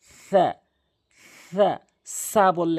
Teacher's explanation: জিহ্বার আগাটি সামনের দুটি দাঁতের আগাতে মিলাবেন নরম করে